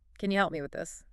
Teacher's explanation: Can you reduces to can ya and help me often flows together. Maybe like help me with a very soft P.